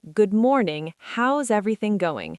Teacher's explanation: Notice that how's a contraction. We're not saying how is separately. The words flow together like water.